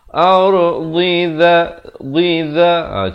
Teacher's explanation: Pertamanya dad baris bawah bunyi dhi, kemudian zal baris bawah ujung lidah za.